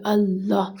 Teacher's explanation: الف کو لام میں ملیں گے، پھر لام دوبارہ وہاں ہا کی طرف جائے گا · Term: شد